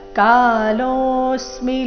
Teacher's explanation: ಕಾಲೋ ಎರಡು ದೀರ್ಘ ಲೋ ಮೇಲೆ ಆಘಾತ